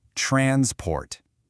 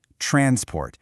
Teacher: When we're talking about transport as a thing, a noun, the stress is on the first part.